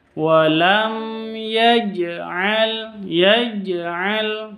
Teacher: jadi bacaan qolqalah qolqalah itu harus dipantulkan · Jim sukun Jim sukun berarti ini bacaan qolqalah qolqalah sugro karena ada di tengah kata di tengah kalimat bukan di akhir